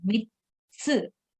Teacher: so it's not mitsu but mitsu. Okay, so we are giving little bit more time to the tsu sound.